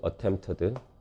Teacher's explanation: 슈와 삽입 현상이 일어납니다. 트나 드 발음 뒤에서 그래서 attempted라고 소리 나는 이유는 트 소리 뒤라서 어드로 발음됩니다.